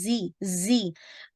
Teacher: तो खुजीना, देखिए तो ख़ज़ीना आपने ख़ा को हेवी करना है, तो ज़ी को आपने इंशाल्लाह लाइट पढ़ना है, लेकिन दाल के मखरज से डिफ़र करना है, ठीक है? ज़ी, थोड़ी-सी व्हिस्लिंग साउंड होगी